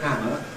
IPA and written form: ˈhæmə (hammer)